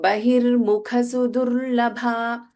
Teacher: mukha kha is mahaprana, whereas sudur da in sudu, that is alpa prana da